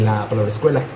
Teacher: se le agrega a inicio de palabra una vocal para que podamos decirlo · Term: Prostética